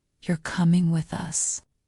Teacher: this is a question your voice goes up at the end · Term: intonation